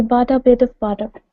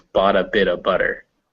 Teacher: The boughta fuses and the bitta fuses, so it's bought a bit of butter. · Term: taps